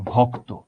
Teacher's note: শব্দের শেষে যখন আমরা সংযুক্ত বর্ণ পাই, সেক্ষেত্রে আমরা দেখি সবসময় আমাদের সংযুক্ত বর্ণের যেই শেষ অংশটা, সেখানে সবসময় ওটা ওকারান্ত হয়ে যাবে।